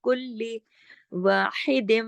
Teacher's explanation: کلی کو سختی سے جوڑیں گے، تشدید ہے، دو لام ہے